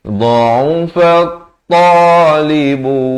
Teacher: Kemudian terus ibtidak pada dha'ufat ta, fa baris fathah, terus naik atas ta yang bertanda syaddah. Ini alif lam syamsiyah ya, lamnya tidak dibunyikan.